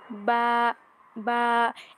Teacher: বায়ের মাখরাজটা হচ্ছে দুই ঠোঁট মিলিয়ে স্বাভাবিকভাবে পড়তে হবে, দুইটা ঠোঁট এক জায়গায় করে বা।